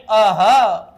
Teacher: आता या ठिकाणी हे जे दोन बिंदू तुम्हाला दिसतात, या बिंदूचं नाव आहे विसर्ग आणि विसर्गाचा उच्चार ह या वर्णाला झटका दिल्यासारखा होतो